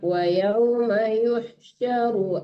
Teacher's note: Tidak panjang runya, dipercepat.